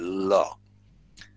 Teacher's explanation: সামনে তোমার দন্তমূলে জীবটা আটকে গিয়ে তোমার দুই পাশের জীব একটু নেমে যায় সেখান দিয়ে বাতাস বেরিয়ে যায় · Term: লিকুইড তরল ধ্বনি